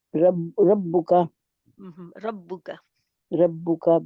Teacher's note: जब आप रब्बुका पेश अदा करते हैं तो जी पेश अदा करते हुए आप उसके आगे वाओ जज़म वाली लगा जाते हैं, वो बचाना है उसको